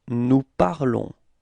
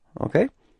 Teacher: keep in mind that final S is not pronounced